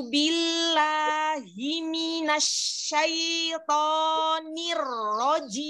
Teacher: untuk semua kasrah yang ada di taawudz ini berbunyi I